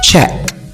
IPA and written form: tʃek (check)